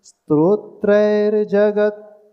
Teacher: त का पूरा उच्चारण नहीं यानी जगत यानी त आधा ही आया है हमारे मुख से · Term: हलंत